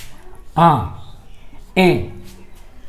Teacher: मुख के साथ साथ नाक से भी ध्वनि बाहर आ रही है, यानी नाक में भी थोड़ा सा दबाव पड़ता है। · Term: अनुनासिक स्वर